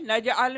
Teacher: جیم قلقلہ ہے نجعل میں، تو جیم ڈبل پڑھیں گے، ڈبل ساؤنڈ کر کے پڑھیں گے،